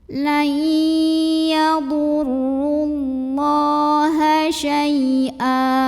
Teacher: Layyadurrullah. Allah mad asli atau mad tabi'i karena ada baris fathah tegak di atas huruf lam. Cara membacanya dipanjangkan lamnya 2 harokat.